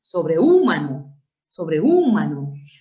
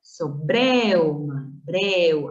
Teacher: Una abierta E más una cerrada U con acento en la abierta, eso es diptongo.